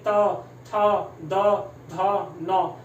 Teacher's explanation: हर अक्षर को बोलने में आपकी जीभ लग रही होगी, कहाँ, दांतों को। तो ये क्या हो गया, इनका उच्चारण स्थान दंत हो गया।